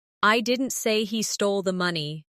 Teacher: In the first one, the stress is on I, meaning maybe someone else said it